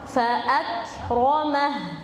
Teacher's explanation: Dia nempel dulu di makhraj ak, lalu dikeluarkan nafas sedikit baru ke mim.